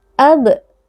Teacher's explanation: Huruf ba yang sukun dibaca dengan qalqalah yaitu dengan memantulkan suara.